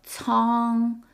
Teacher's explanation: the letter C in Chinese is never pronounced like K. It's pronounced like ts.